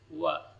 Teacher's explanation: Wailul likulli humazatil lumazah. Wa, huruf waw keluar dari dua bibir